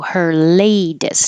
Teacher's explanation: that t changes to a d